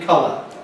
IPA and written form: ˈkʌlə (colour)